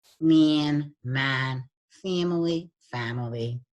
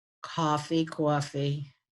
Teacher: the specific Distortion that we do have in this region is the nasalization of vowels